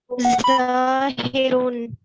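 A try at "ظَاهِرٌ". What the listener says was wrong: ज़ाहिरुन, हर्फ़े हा। अब यहाँ के ऊपर ज़ाहिरुन को हल्का सा खींचना होगा, क्यों? क्योंकि हर्फ़े ज़ा के बाद अलिफ है। हाँ अलिफ है जी, इसलिए इसको खींच के पढ़ा जाएगा।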